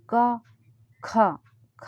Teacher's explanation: अल्पप्राण महाप्राण के लिए आप बोल के देखिए इनको तो क ख में हवा ज्यादा निकल रही है तो यह महाप्राण है